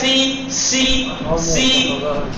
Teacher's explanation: سین میں سیٹی سی آتی ہے